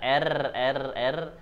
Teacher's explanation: roh ujung lidah digetarkan